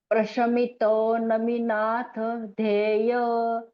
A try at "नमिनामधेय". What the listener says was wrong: नमीनाथ नहीं है यहाँ पर, नमीनामधेय। नमीनाथ ही है, लेकिन यहाँ पर है नमी नामधेय। नामधेय मतलब जिनका नाम नमी है। ओके, नमीनामधेय